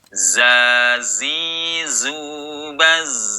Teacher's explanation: Kalau sukun menjadi zazi zubaz. Nah, ada tambahan suara desis. Desisnya huruf za. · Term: sofir